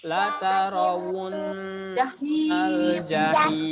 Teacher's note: ro tidak boleh monyong. Yang monyong huruf wawunya ya.